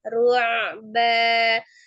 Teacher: ainnya itu ditawasudkan dulu, sifatnya mengalir sebagian. Jadi jangan ru'ba, jangan menyerupai hamzah.